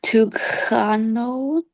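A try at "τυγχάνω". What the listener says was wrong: Yeah, put a little in. Put a little in the ng. Tunghano.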